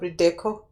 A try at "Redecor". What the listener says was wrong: But there's an R in the end. Why don't you want to pronounce it? Redecor. Not Redeco. Redecor. Redecor.